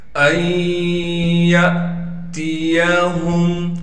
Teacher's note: یا کو آگے حمزہ ساکن سے ملا دیں گے، حمزہ ساکن ہے لہٰذا حمزہ پر جھٹکا دے کر پڑھیں گے۔ تا کو باریک کر کے پڑھیں گے، یا کو بغیر کھینچے پڑھنا ہے، ہا کو میم ساکن سے ملائیں گے بغیر غننے کے۔